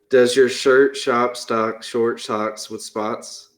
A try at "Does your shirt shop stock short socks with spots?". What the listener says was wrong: You said shocks instead of socks.